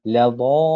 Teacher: Kita baca dha itu terlebih dahulu yang panjang, kemudian barulah kita masuk kepada lam.